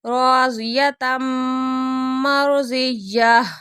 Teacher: تنوین کے بعد میم آ رہی ہے تو یہاں پہ غنّے کے ساتھ ہی ادغام ہو رہا ہے